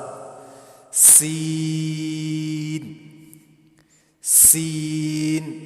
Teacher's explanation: صفت صفیر سین. سیٹی کی آواز آنی چاہیے